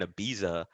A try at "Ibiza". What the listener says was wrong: You said it wrong. It's a Ibiza, right? They say it weird, right? In Ibiza, they don't pronounce a Z. It's like a TH, right? Am I tripping? I'm pretty sure it is that.